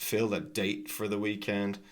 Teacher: And then the T is unreleased.